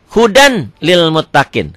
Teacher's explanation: Idgham bila gunnah, idgham yang tidak memakai dengung ke hidung.